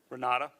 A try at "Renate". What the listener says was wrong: With an E at the end, R-E-N-A-T-E.